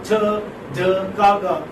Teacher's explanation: Complete obstruction, and then sudden release of breath. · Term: plosives